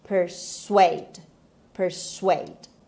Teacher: the stress is on the second syllable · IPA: /pərˈsweɪd/